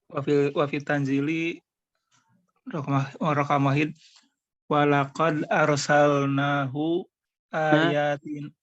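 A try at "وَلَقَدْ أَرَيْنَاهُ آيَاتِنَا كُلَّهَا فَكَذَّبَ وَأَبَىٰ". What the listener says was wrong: Mana itu? Kok beda? Walaqad arainahu, bukan arsalna.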